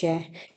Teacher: श ध्वनि का उच्चारण स्थान तालव्य है। जिन व्यंजनों के उच्चारण में जीवा का अग्र भाग यानी कि आगे का भाग कठोर तालु का स्पर्श करता है उन्हें तालव्य व्यंजन कहते हैं।